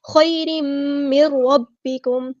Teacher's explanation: خیرم من ربکم، نون ساکن کے بعد را ادغام بلا غنہ، را ہمارا ہیوی لیٹر ہے، موٹا ادا کریں گے، پورا ادا کریں گے